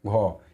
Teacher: जिसका उच्चारण करने में मुंह से अधिक हवा निकलता है, उसे वर्ण को हम लोग बोलेंगे महाप्राण।